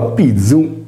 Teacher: Pronunciando la parola pizzu, panna in sardo, sentiremo vibrare le corde vocali, poiché il suono è sonoro.